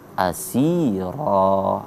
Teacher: huruf si-nya dibaca agak panjang dua harokat atau satu alif karena mad tabi'i